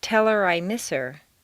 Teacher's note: on personal pronouns it's common to drop the h